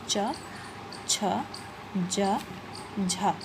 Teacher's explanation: स्पर्श संघर्षी व्यंजन, मतलब वो स्पर्श व्यंजन भी होते हैं, साथ में हमारी जीभ थोड़ा घर्षण करती हुई वो वर्ण हमारे मुंह से बाहर आते हैं